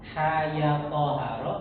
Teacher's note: Makanya kelima huruf ini ha, ya, to, ha, ro itu dibacanya dengan mat tabi'i harfi, dengan panjang 2 harokat